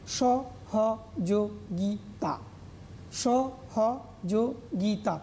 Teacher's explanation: প্রত্যেকটা ক্ষেত্রে দেখো স্বরান্ত, এখানে কোনো ব্যঞ্জনান্ত নেই, কোনো দ্বিত্ব নেই। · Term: মুক্ত